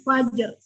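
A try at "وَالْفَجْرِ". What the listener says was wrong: Jangan disambung ya, jangan wal fajar, bukan. Sempurna jimnya. Wal tanpa ro nih, wal fajar. Nah, baru belakangan dikasih takrirnya aja. Untuk khusus wal fajri, maka dia sempurna dulu jim sukunnya. Baru masuk bunyi takrir. Jadi sempurna dulu jimnya, baru ada belakangan. Tapi disambung.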